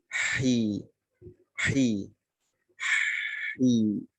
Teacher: Huruf ha, kasroh, keluarkan. Suara orang capeknya keluarkan.